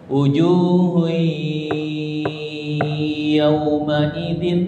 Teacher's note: Masuk melebur bigunah dengan gunah. Gunah itu suara yang keluar dari hidung ditahan tiga tek tek.